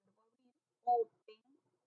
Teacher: el verbo abrir, open, suena más fuerte aquí en la O